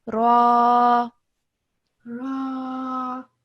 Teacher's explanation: So this is an alif madda. So alif madda means that you elongate the sound of the ra